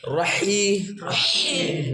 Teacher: ह कहां से निकलेगा दरमियान से दरमियान हलक से